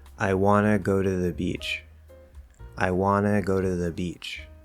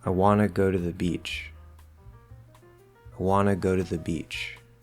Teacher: So I'm saying I, go straight from that I to the W. I Okay, super short and quiet on that I.